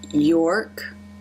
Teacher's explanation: the r is at the end of the syllable here so the lips are more relaxed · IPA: ɹ